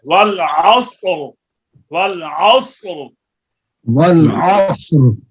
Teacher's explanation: صاد بھی پر ہے را بھی پر ہے